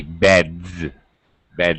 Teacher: straight from the D to the Z